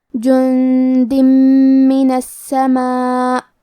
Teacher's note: کلمت السماء میں حرف سین پہ تشدید ہے تو ہم 2 حرف کے برابر سین کو پڑھیں گے، کیونکہ تشدید کی اصلیت 2 حرف ہے. · ہم یہ تنوین کو میم میں ملا کے غنہ اور تشدید کے ساتھ یہ حکم کو ادا کریں گے · اس مد میں ہم اپنی آواز 4 مد کے برابر لمبی کریں گے. آخر میں حمزہ کے نیچے زیر ہے تو ہمیں زیر کو ظاہر کرنا ہے. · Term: ادغام, مد واجب متصل